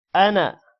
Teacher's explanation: حمزہ زبر ا، نون الف زبر نا، انا۔ اب یہاں پر الف آ رہا ہے لیکن ہم نے الف کو لمبا نہیں کیا، تو قرآن مجید میں جہاں پر بھی انا ورڈ آئے گا تو اس کو لمبا نہیں کریں گے، باقی جس جگہ بھی الف آئے گا تو وہ لمبا ہوگا۔